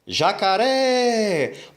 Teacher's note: jacaré é uma palavra oxítona porque a última sílaba é a mais forte